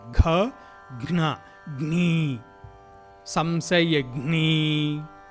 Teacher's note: ఘ అనే ఉచ్చారణ మీకు కంఠస్థానం అంటే ఇంచుమించుగా విశుద్ధ చక్రస్థానం నుంచి ఘ్న అని వస్తుంది